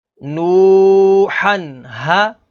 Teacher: اس میں ناظرین تنوین کے بعد اگلا حرف ہا ہے، ہا حروف علقی میں سے ہے تو یہاں پر اظہار ہوگا یعنی غنہ نہیں کریں گے